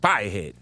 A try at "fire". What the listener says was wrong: Fire. It's fire. Fire. No R. Fire.